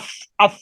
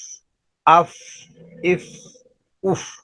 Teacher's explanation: اس کو جب ادا کرنا ہے تو ہمس کی صفت کے ساتھ کہ جب اس کو ادا کرنا ہے تو اس کی آواز کو آہستہ آہستہ نیچے لے جانا ہے